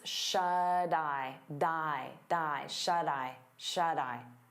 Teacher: we turn that T into a soft D because it's between vowels, and you'll hear it on both words.